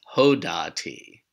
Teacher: So in this case, the initial yod has turned into a vav, if you want to think of it that way, or the hey has taken on an o vowel instead of a hirik vowel